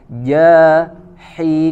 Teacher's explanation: huruf ha-nya sempurnakan dari wasatul halq, ya, dari tengah tenggorokan